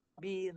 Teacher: Baru nipis. Bila masuk ra mati kan nipiskan suara, perlahankan suara, kontrol sikit.